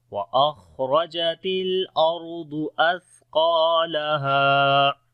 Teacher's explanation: وأخرجت الأرض، یہاں پر بھی را اور دعا دونوں کو موٹا پڑھیں گے۔ اثقالہا، سا کو باریک پڑھیں گے اور سا کے اندر بھی صفت ہمس ہوگی، سانس جاری ہوگا